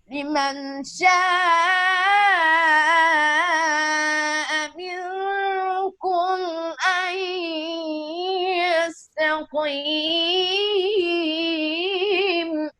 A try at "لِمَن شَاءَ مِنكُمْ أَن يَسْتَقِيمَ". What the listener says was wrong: لمن پہ آپ نے غنہ نہیں کیا. لمن شاء منكم أن يستقيم.